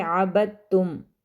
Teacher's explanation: اس دال پر کلکلا نہیں کریں گے کیونکہ آگے تشدید ہے